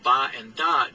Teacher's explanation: the sounds ba and da do not come with a burst